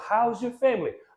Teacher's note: is because sound that is given by the letter S S letter s gives us the Z sound at the end of this contraction